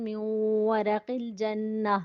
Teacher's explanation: نون ساکن کے بعد واو حروف ادغام میں سے آ گیا، ادغام بالغنہ، اور جنہ میں نون شدید کا غنہ